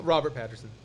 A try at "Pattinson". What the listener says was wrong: Pattinson. It's an N instead of an R. It's not that hard.